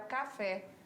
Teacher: E a oxítona é a sílaba forte na última